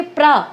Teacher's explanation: आपने क्या ज्यादा बोला? प थोड़ा बोला, र ज्यादा बोला। तो र होता है पूरा और प होता है थोड़ा। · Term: संयुक्त वर्ण